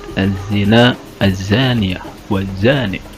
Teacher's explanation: Lafaz-lafaz tersebut hukumnya adalah alif lam samsiyah karena alif lam bertemu dengan huruf samsiyah, di antaranya huruf zai, yang mana dibacanya alif lamnya disamarkan, diidghamkan pada huruf samsiyah. Alif lamnya tidak dibaca jelas.